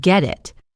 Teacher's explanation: The T in get is followed by the vowel I in it, so it links and the T sound becomes a soft D, or a flap T sound, common in American English.